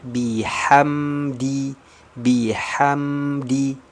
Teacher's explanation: mim mengalir sedikit suaranya tidak banyak-banyak jangan terlalu lama menahannya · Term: huruf mim